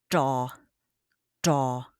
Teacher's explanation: The tip of your tongue rolls up to the roof of your mouth, and then you produce almost like a D sound. It is not as frontal, but it comes kind of more from the middle of your mouth, like this.